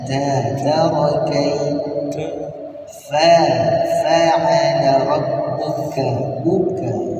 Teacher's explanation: Sekali lagi huruf ta dan huruf ka dibaca berdesis.